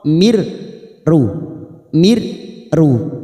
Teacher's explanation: P huruf ro Mir ru Mir ru namanya Idam Bil guna hanya masuk tanpa mendengung tanpa ditekan lama-lama